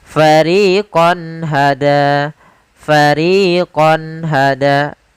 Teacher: Karena izhar adalah menjelaskan menampakkan suara nun sukun dan tanwin dengan jelas tanpa disertai ghunah